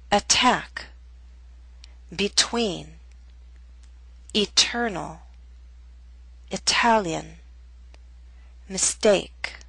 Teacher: we have a true T in the middle of a word at the beginning of a stressed syllable.